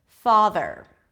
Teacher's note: so you bring the tongue up for the th and you pull it in